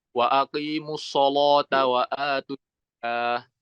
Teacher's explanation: kalau menurut Imam Warsh ini lamnya harus dibaca tebal